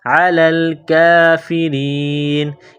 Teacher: را کے نیچے زیر ہے، را کو باریک کرنا ہے